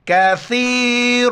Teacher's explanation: سا کے وقت زبان باہر نکالیں گے اور یا کے ساتھ ملائیں گے اور را کو موٹا کریں گے. کاف زبر کا، ثا یا زیر ثی، را زبر را، کثیر، تا میم دو زبر تم، ناک میں آواز پیدا کریں گے، کثیرتم بِإِذْنِ اللہ.